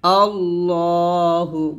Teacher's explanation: এখানে লাফজুল লামটা মোটা হবে আল্লাহ এরকম আল্লাহু বলবেন না আমরা অনেকে আল্লাহ বলি তো আল্লাহ